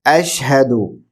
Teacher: جیسے پچھلے ویڈیو میں ہم نے ڈسکس کیا، یہاں پر بھی پہلا جو لفظ ہے وہ اشہدو ہے، حمزہ سے شروع ہوگا، شین بھرپور، اش، ہا حلق کے نچلے حصے سے، دو باریک، اشہدو.